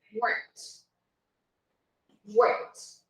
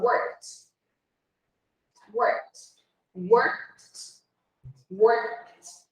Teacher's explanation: Eu vou pular do K para o som de T direto. Eu vou simplesmente ignorar isso aqui, o finalzinho aqui, e na hora que eu falar, eu vou falar worked.